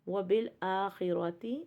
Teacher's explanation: خو اور را ہیوی ہے کیونکہ خو ہیوی ورڈ ہے اور را کے اوپر زبر ہے